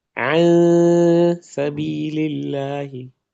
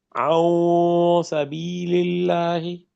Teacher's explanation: The ikhfa has to be towards the lower side, towards the lower palate, not towards the nose.